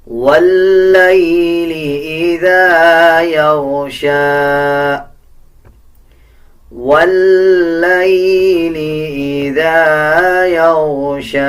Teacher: واللیل اذا یغشی، واللیل اذا یغشی۔ لام کے اوپر شد ہے، واو کو لام کے ساتھ ملا کے پڑھا جائے گا اور لام کو مضبوطی کے ساتھ ادا کیا جائے گا